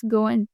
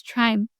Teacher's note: when words end with ing, we don't sound or give emphasis to the letter G.